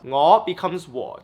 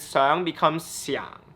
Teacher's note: that rising tone in cantonese whenever it rises becomes a tone three in mandarin